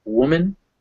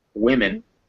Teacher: one it's woo and second one it's wit so woman women in the first one it's that it's that relaxed u sound and the second one is that relaxed e sound